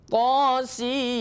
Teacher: Kalau ini nunnya izhar karena tidak bertemu apa-apa selanjutnya, tidak ada huruf ya.